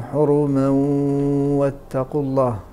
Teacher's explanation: فهنا نجد الواو مشدده في اللفظ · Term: الادغام الناقص